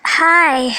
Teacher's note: notice that the I sound in hi is extended to show that Jane is very pleased to see Helen